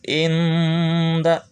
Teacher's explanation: Nah, ketika menyebutkan nah, tempelkan ujung lidah ke pangkal gigi atas. Inda, nah, seolah-olah samar antara n dan eng ya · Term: disamarkan